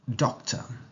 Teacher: in doctor we don't stress the tur part · the schwa sound appears at the end of the word